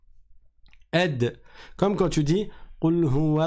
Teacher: je laisse juste rebondir le son après avoir mis en contact les deux points